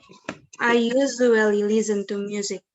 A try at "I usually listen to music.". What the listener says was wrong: Nah, listen-nya justru nggak Z, listen-nya tuh S. Jangan listen, tapi listen biasa, ringan ya. Coba sekali lagi.